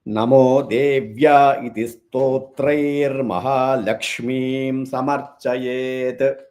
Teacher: So the visarga changes to ir sound.